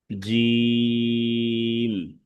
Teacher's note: জিম হচ্ছে 3 আলিফ টেনে পড়তে হবে শক্তভাবে